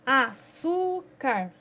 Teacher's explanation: açúcar, nós temos a palavra su, que ela é a sílaba que produz um som mais forte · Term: sílaba tônica